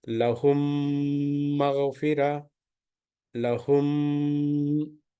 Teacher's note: So when we read the meem sakina followed by meem, you have to merge, you have to mix the meem sound of meem sakina with the following letter of meem in such a way that if you mix the milk and water together, you cannot differentiate it. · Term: idgham shafavi